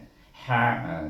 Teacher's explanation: ha ini adalah ha di tengah halkum